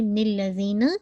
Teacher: زال کا مخرج آپ کی ٹپ آف دا ٹنگ، آپ کے سامنے کے جو دانت ہیں اس کے ایجز کے ساتھ لگے گی، اگر پیچھے رہے گی تو زی کا ساؤنڈ آ جائے گا، ٹھیک ہے۔